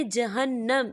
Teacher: یہاں نون مشدد ہے تو یہاں پر غنہ ہوگا